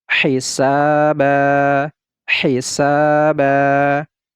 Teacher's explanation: setelahnya Alif kecuali tamarbuto maka ini kita panjangkan bacanya dua harakat ini tidak lagi kita baca ban tetapi kita baca ba panjangkan dua harakat · Ini tidak lagi kita baca ban, tetapi kita baca ba, panjangkan 2 harokat. Hisaba, hisaba.